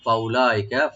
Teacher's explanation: আল্লাহ রাব্বুল আলামিন বলতেছেন ফাউলাইকা, yani those people, ওরা যারা আল্লাহ এবং আল্লাহ রসুলের কথা মান্য করে চলবে, ওইসব লোক, ফাউলাইকা, ফা ওপেন রাখবেন, উলা উতে কোনো টান নাই, এটার ওয়া যে মাঝখানে আছে এটা সাইলেন্ট থাকবে